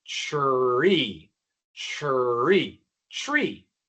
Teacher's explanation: cuando la T es seguida inmediatamente por la R, entonces la T no se pronuncia como T, sino como CH, igual que la CH en español. Ch. Entonces tenemos que pronunciar el sonido de la CH, inmediatamente mover la lengua hacia atrás, apuntar la lengua hacia atrás, porque así se pronuncia la R en inglés, apuntando la lengua hacia atrás en la boca.